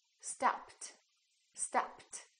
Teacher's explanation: what happened to the Ed it became a t